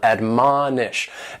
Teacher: admonish has 3 syllables and the stress is on that second syllable